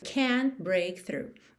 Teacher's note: Percebe que você também não ouve o T de can't.